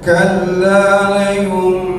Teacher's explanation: Suara nunnya hilang menjadi suara mim, ya. Nun sukun ketemu ba, ya. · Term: ikrab